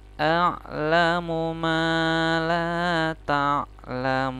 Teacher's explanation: pas ta'lamun itu panjangnya sekitar 4 sampai 6 ketukan. Seperti itu ya, teman-teman. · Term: mad arid li sukun